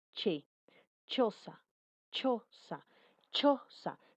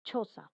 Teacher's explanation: Dice que impide el paso del aire y luego lo expulsa, impide el paso del aire, sí, va a impedir el espacio del aire, che, choza, choza, choza. Si tú pones la palma de tu mano aquí adelante, te darás cuenta que sale una ligera expulsión de aire, choza, y podrás sentirlo en la palma de tu mano. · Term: consonante che